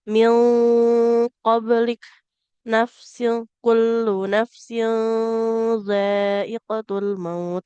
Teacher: bunyi nun sukunnya kita samarkan ya tidak sempurna bunyinya · ikhfa yang mana cara bacanya samar-samar ya. Nah, ditahannya agak lebih lama tidak terburu-buru